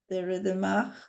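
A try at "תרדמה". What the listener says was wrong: Okay, the hey at the end is silent. So it's Tardema, Tardema.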